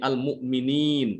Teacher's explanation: Yang keluar dari hidung itu nanti setelah dia mau berhenti ya. Ketika udah sampai ke nun baru dia di situ keluar dari makhraj dari hidung. Jadi jangan dia terburu-buru berarti ya.